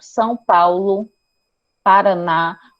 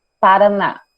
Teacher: Retroflexo, que é quando ele liga, a língua vai em direção ao palato duro. São Paulo, Paraná, ou seja, preste atenção que a língua de vocês, ele não bate levemente como o TEP, ele vai e bate mais forte.